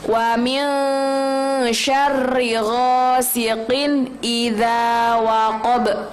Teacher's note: Ada ba di akhir, itu juga bacaan qalqalah, jadi harus dipantulkan.